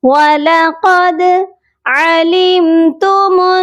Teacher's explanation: دال حروف قلقلہ ہے اور یہاں ساکن بھی ہو رہا ہے، اسی لیے دال پر قلقلہ کیا جائے گا